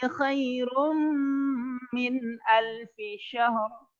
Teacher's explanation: Khairum, tanwin dimasukkan ke huruf mim · tanwin bertemu dengan mim maka ditahan 2 harokat ya. Lailatul qadri khairum min alfi syahr ya. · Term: Idgham bigunnah